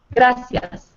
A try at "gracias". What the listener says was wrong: Notice the R does not roll there. It's not gracias, it's gracias. Gracias.